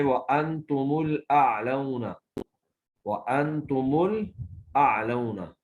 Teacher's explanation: میم جمع جو ہے اگر ساکن سے پہلے آ جائے تو تمام قراء نے اس کو بغیر صلہ کے ضمہ سے پڑھا ہے